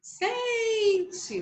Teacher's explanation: a sílaba tônica da palavra sente é o sem, tá? Por isso que eu pintei aí o fundinho dela de amarelo.